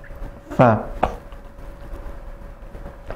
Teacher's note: dengan menempelkan ujung gigi seri atas dengan perut atau lambung bibir bawah, ya. Fa, bukan bagian depan bibir tapi bagian dalam. · huruf fa sifatnya adalah nafasnya mengalir, ya, sifatnya adalah nafasnya mengalir dan juga suaranya mengalir. Dan kemudian cara mengucapkan atau makhrajnya ada di kedua bibir, ya, dengan menempelkan ujung gigi seri atas dengan perut atau lambung bibir bawah, ya.